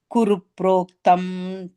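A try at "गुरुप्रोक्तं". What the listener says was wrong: Inj. Guru proktanj. Not a makara.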